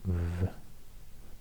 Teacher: V, the voiced labiodental fricative. And yeah, the voiceless and the voiced version.